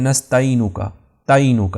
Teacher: تا کے بعد وہ عین کو بالکل ہی سکپ کر دیتے ہیں ، تو عین کو بھی آپ نے اچھی طرح سے ادا